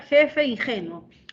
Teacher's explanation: ese fricativo velar está siendo representado en la escritura con j en la palabra ingenuo ingenuo también vemos ahí el fonema fricativo velar · Entonces vemos que en jefe, el primer fonema es un fricativo velar sordo. Ese fricativo velar está siendo representado en la escritura con J. · En la palabra ingenuo, también vemos ahí el fonema fricativo velar, pero está representado en la ortografía del español con letra G.